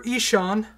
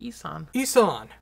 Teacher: the H is before the S. That's not a sh sound.